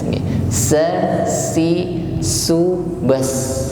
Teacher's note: huruf sin sifatnya adalah hamas, ada nafas yang mengalir. Dan ketika huruf sin ini ditasydid, maka sifat hamasnya semakin tampak, semakin jelas.